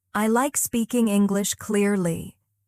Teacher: Hear how the stress falls on like, English, and clearly?